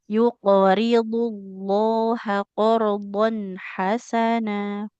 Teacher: Qnya memantul tebal, dnya juga tebal.